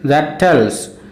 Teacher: that is unstressed tells is stressed